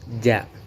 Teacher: tengah lidah dengan langit-langit, hurufnya ja atau jim